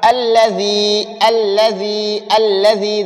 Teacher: ذال کو نرم بھی پڑھنا ہے، تھوڑا لمبا بھی پڑھنا ہے